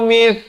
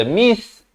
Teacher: di hujung lidah mesti keluar mith, jangan baca mis, tak betul, jadi huruf sin itu ya